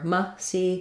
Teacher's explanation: I think it's more typical to use a schwa in this context of that unstressed um second to last syllable